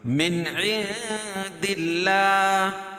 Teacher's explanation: اللہ کے لام سے پہلے زیر ہے تو اللہ کا لام باریک پڑا جائے گا، اور کھڑا زبر قائم مقام الف مدہ کے ہوتا ہے، اس کو ایک الف کے برابر کھینچ کے پڑھیں گے.